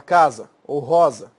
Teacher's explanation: o s tem som de z quando estiver entre duas vogais